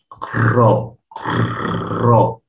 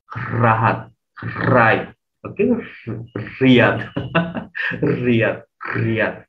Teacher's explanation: সো র উচ্চারণ করার সময় নরমালি বলে ফেলি, কিন্তু র এর উচ্চারণ কিন্তু নরমালি হবে না। র উচ্চারণ করার সময় জিহ্বার যে অগ্রভাগটা আছে, মানে জিহ্বার যে আগাটা আছে কাঁপবে, র র, যে চানা চুর করাটা ওরকম আর কি। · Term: কম্পনজাত